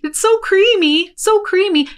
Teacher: She cuts off the ih sound of it's so creamy